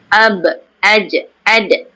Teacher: Ba, jim, dal, kotor. Okay, bila dia bertanda mati, ada lantunan selepas menyebutkan huruf tersebut